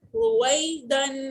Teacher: یہ اب یا لین ہے، یہ یا مدہ تھی، اس سے ہم اس کو سٹریچ کر رہے تھے کیونکہ یا ساکن سے پہلے جب بھی زیر آتی ہے تو یا مدہ ہوتی ہے، اور یا ساکن سے پہلے جب بھی زبر آتی ہے تو وہ یا لین ہو جاتی ہے، اور یا لین کو جلدی پڑھتے سافٹ پڑھتے، اس کو کھینچتے نہیں